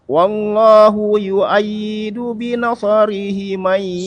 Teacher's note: Hi-nya nanti pendek aja, 2 harokat.